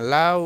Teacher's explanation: এখানে দেখেন লাউ, লাউ শব্দটিতে লা এটাকে টেনে পড়া যায়, এটা হচ্ছে পূর্ণ স্বরধ্বনি। উটাকে টেনে পড়া যায় না, লাউ, ইচ্ছা করলেও টেনে পড়া যায় না। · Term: দ্বি-স্বরধ্বনি